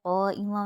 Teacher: قائمہ میں قا پہ چھوٹا مد ہے، اس کو 3 الف کی مقدار کھینچیں گے۔